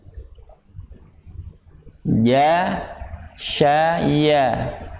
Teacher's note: makhrajnya huruf ya ada di tengah lidah atau lidah bagian tengah.